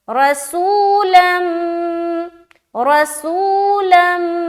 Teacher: موٹا رکھنا ہے کیونکہ را کے اوپر زبر ہے۔ اس کے بعد سین واو پیش، سو میں ہم واو مدہ کر رہے ہیں، واو ساکین اس سے پہلے پیش۔